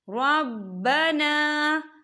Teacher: خالی الف سے پہلے زبر ہے تو یہاں پر الف مدہ ہو رہا ہے، تو ہم اسے دو حرکت کی برابر کھینچے پڑھیں گے